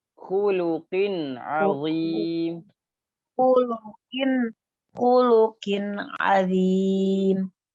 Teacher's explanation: Nah, jangan panjangin lu-nya